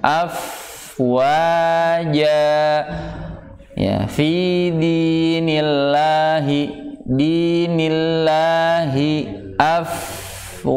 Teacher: fa ini makhrajnya atau tempat keluarnya adalah di bagian bibir yang bawah. Bibir bawah yang bertemu dengan dua gigi seri atas. Ya, jadi bukan hamasnya saja, namun bunyi sifat bunyinya, ya, bunyi dari sifat rokhwah atau rikhwahnya itu pun harus dialirkan panjang.